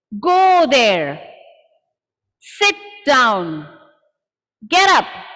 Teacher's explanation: Now the falling pitch we will use for commands.